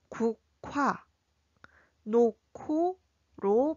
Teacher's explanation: 기역과 히읗이 만나면 키읔으로, 히읗과 기역이 만나도 키읔으로 소리납니다. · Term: 유기음화